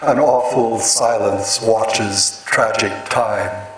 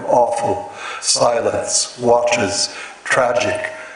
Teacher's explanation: actually have a falling trochaic rhythm awful silence watches tragic in in every case you have the stress on the first syllable